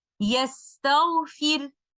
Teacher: But if I choose to stop here with a temporary sukoon on letter Ra, then I have the conditions where letter Ra is recited with tarqiq, because when I put a temporary sukoon on letter Ra, I will follow the vowel of the previous letter. Since that is a kasra, I will make letter Ra light.